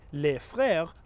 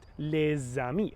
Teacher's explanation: So this word, for example, is pronounced le in isolation and before consonants. But before vowels, the silent S is pronounced like a Z sound. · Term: liaison